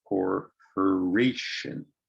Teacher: so that's a four syllable word the third syllable is stressed